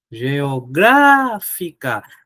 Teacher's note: A sílaba tônica é antipenúltima, então aqui é uma proparoxítona.